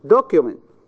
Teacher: The stress is in the first syllable.